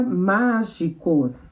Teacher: a sílaba tônica, a sílaba mais forte, tá fácil de saber que é o má, porque já tem um acento.